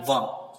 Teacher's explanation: दंतोष्ठ, दांतों के साइड से बोलने वाले व। ठीक है, इसमें दांतों की हेल्प लगती है।